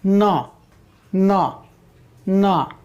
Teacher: दांत की मदद, और नाक की भी मदद है, न, न, अनुनासिक में भी आया।